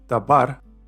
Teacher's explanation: the last syllable gets the stress and is thus accented even if there is no accent